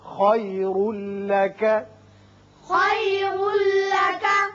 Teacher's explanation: را کے اوپر دو پیش تنوین ہے، بعد میں لام ہے، یہاں ادغام بغیر غنہ ہوگا۔ خیر لک خیر لک، من الاولی، من الأولى، اب یہاں وقت کی صورت میں لا الف کے برابر آواز رہے گی، لمبا نہیں کریں گے۔